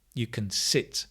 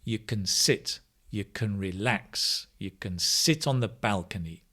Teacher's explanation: sit on the balcony notice can becomes can you can sit because we stress the next word we very rarely stress can